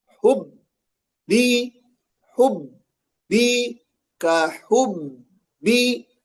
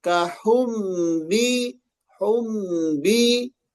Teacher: Ya, jadi kayak humbi, humbi gitu. Jadi awalnya mim, keluarnya ba.